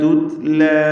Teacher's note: തുത്ല എന്ന് വ്യക്തമാക്കി പറയുക. എന്നാൽ ഖൽഖല വരരുത്. തൂത്ത് എന്ന് ശബ്ദത്തിന് ചലനമുണ്ടാവരുത്.